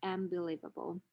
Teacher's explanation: the alveolar nasal becomes the bilabial nasal